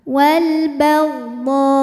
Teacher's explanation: kita panjangkan dodnya dulu, kemudian masuk ke hamzah pakai nabar. Wal baldo, ya, agak dihentak ujungnya.